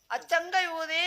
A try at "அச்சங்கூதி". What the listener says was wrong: சேர்த்து சொல்லு. சேர்த்து சொல்றா.